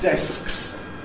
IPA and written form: desks (desks)